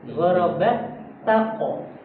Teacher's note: Jadi ta'nya tipis, qafnya tebal.